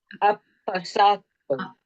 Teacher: pronounce this Apasato with a very distinct double p and double h